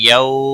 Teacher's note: یو واولین ہے، تھوڑا نرمی کے ساتھ کھینچ کر ادا کریں گے